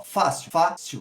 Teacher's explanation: A gente tem 2 sílabas, sílaba tônica fá, ou seja, penúltima, então é uma paroxítona.